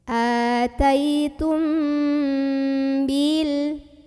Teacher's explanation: Maka cara membunyikan mim sukunnya ini didengungkan dulu ya. Jadi bunyi amnya ditahan dulu. Ataitum. Kalau kita pakai yang rapat bibir rapatnya tidak perlu menekan, cukup lunak saja.